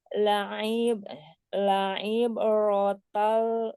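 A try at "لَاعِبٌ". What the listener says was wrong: sempurnakan ainnya. La'i, gitu ya. Ba-nya di kol-kolah secara alami ya. La'ibe, la'iberota, la'iberota, gitu.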